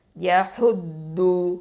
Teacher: இந்த தாதுன்னு சொல்லும் போது நல்லா கொஞ்சம் ஹெவியாக இன்ஷால்லா உச்சரிக்கணும், ஹஃபத்துல் லிசான் எழுத்து